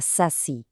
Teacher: A sílaba tônica, a mais forte, é o si.